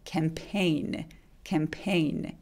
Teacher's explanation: 캠페인은 강세가 이음절이 오기 때문에 캠은 작게 얘기해 주세요